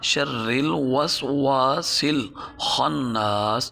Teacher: واو کے ابتدا میں بھی، واو کے انتہا میں بھی۔ واو کے ابتدا میں واو کو پڑھتے ہوئے ہونٹ گول ہوں گے، آخر میں بھی ہونٹ گول ہوں گے۔